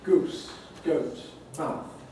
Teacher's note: These are the three long vowels and diphthongs that tend towards a high back area.